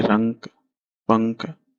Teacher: इनका उच्चारण जो है करते समय वायु केवल नाक से निकलती है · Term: अनुस्वार